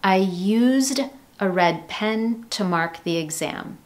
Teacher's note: With the verb use in English, when we use it in the past simple form, we have used with that strong d sound at the end. So you have a z, z, d, used.